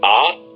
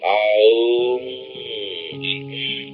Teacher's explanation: The Hindus use the word Om, which would be spelled out A-U-M, because the letter A, A, is in the back of the throat. You push it through the vowel to Aum, it's at the lips. So the word Om comprehends the whole range of sound.